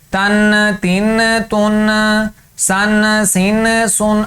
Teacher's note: آخر میں آواز کو ہلانا نہیں ہے، آخر میں اگر آواز کو ہلائیں گے تو وہ غنہ بن جائے گا، جو حرف غلط ہو جائے گا، جیسے کہ تن تن تن، سن سن سن۔ آخر میں نون بالکل آہستہ سے ادا ہو، آخر میں آواز نون کی ہلے نہیں